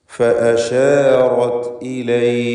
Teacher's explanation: മദ് ആരിദ് ലിസ്സുക്കൂൻ എന്ന ദീർഘമാണ്, വഖഫിന് വേണ്ടി താൽക്കാലികമായി വരുന്ന ദീർഘം. ഇവിടെ 2 ഹർക്കത്തിൻ്റെ അളവിൽ മതിയാക്കാം, ഖസ്ർ ചെയ്യുക എന്ന് പറയാം.